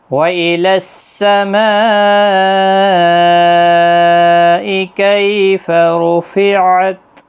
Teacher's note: یہاں پر مد متصل ہے 4 الف کی مقدار کے برابر کھینچ کر پڑھیں